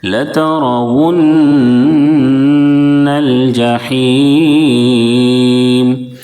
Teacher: نون کے اوپر تشدید ہے اس لیے نون میں غنہ کریں گے، ناک میں آواز کو روکیں گے · بڑی ہا ہے، اس کو درمیانی حلق سے بالکل صاف ادا کریں گے